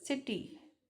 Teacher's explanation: that T becomes a flap